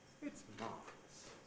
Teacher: by using the high prehead i'm adding enthusiasm to it